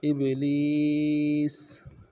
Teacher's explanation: ابلیس، لفظ ابلیس میں حمزہ کو با کے ساتھ ملانا ہے، با جب ساکن ہوگا تو قلقلہ کریں گے